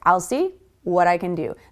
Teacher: I'll see flows together like one word.